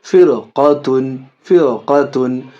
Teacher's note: اب یہاں دیکھیے، فا را زر فر، قاف زبر قا، فر قا، تا دو پشتن، فر قاتن. را ساکنہ کے بعد یہ قاف حرف مستعلیہ میں سے، اس وجہ سے یہ بھی را پر ہوگی. فر قاتن، فر قاتن.